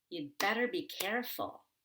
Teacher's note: So you want to stress better and care. But the yud, which stands for you had better be careful, is just going to be yud with that short back U as in book.